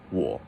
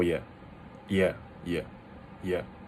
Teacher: the third tone, instead of being like V or like down up, it's just a down. It's kind of like how you say yeah in English.